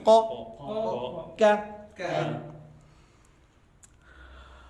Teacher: زبان کی جڑ جب نرم تالو سے ٹکر کھائے تو ق